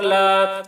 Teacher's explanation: کل لام الف زبر لا، الف سے پہلے زبر ہے، الف مدہ ہوا، اس لیے الف مدہ کو ایک الف کے برابر کھینچ کر پڑھیں گے